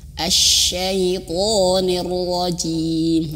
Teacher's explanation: Ro-nya tebal tapi ada getaran r-nya itu jangan berlebihan. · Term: huruf ro